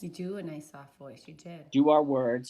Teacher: it definitely seems effortful there might be some vocal instability there as she pushes to get that sound out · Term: distortion